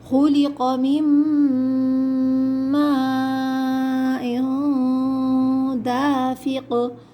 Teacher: یہاں پر اخفا والا غنہ ہوگا، ناک میں چھپا کے غنہ کیا جائے گا